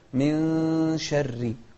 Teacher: الإخفاء، هو حرف من أحرف الإخفاء وهو الشين، أتى بعد النون الساكنة، فيطلقون على هذا الحكم الإخفاء.